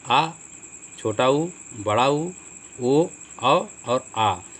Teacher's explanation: जिन स्वरों के उच्चारण में जीभ का पश्च मतलब पीछे का भाग काम करता है उन्हें पश्च स्वर कहते हैं।